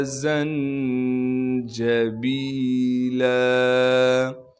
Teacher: مِزَاجُهَا زَنجَبِیلًا، زا کو نون ساکن سے ملائیں گے، نون ساکن سے اس لیے ملانا ہے کہ نون ساکن ہے، نون پہ اخفا یعنی غنہ کریں گے، جیم پر قلقلہ نہیں کیا جائے گا اس لیے کہ جیم ساکن نہیں ہے، با کے بعد یا مدہ ہونے کی وجہ سے با کو ایک الف کے مقدار کھینچیں گے، لام پر جب وقف کریں گے پھر لام کو ایک الف کے مقدار کھینچنا ہے۔